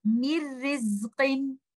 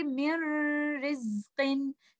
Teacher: you will join letter meem with letter ra, and you will not hear any gunna, any oral part where my tongue is touching the roof of the mouth. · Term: without gunna